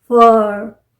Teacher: आर बहुत slightly heard होगा। फर, long sound आ रहा है।